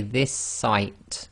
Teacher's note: So if you say this site, so we say this site, so the S, effectively you're holding the S at the end of the word this, and you're finishing off the sound of the S in the next word, which is sight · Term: gemination